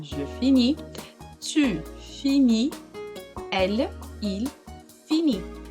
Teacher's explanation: Então, S e T não são pronunciadas. Por isso que eu falo je finis, mas a sílaba tônica é a última.